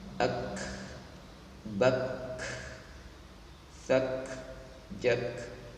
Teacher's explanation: menghamaskan ya, mendesiskan huruf kaf ketika bertanda sukun